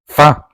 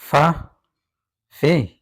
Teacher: Labiodental means the sound is made using the lower lip, the upper teeth. When you gently touch your lower lip to your upper teeth and let air pass through with friction, that friction creates fa. It is exactly like the English f in fan. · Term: Labiodental fricative